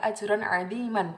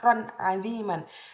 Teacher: Di situ ada kata lafadz ron aziman. Ron aziman dibaca jelas karena itu termasuk bacaan idhar halqi.